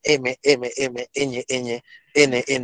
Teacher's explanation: Se llama nasal, nasal, porque un poquito de aire sale por la nariz